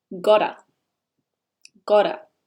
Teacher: In Australia and North America, the T often sounds more like a D.